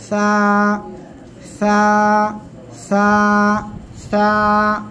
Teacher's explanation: জিহ্বার আগা সামনের উপরে দুই দাঁতের আগার সঙ্গে লাগাবো, লাগিয়ে হালকা বাতাস বের করব, নরম করে উচ্চারণ করব।